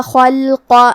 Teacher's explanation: حرف الخاء کو موٹی آواز میں پڑھیں گے اور لام ساکن کو ظاہر کریں گے۔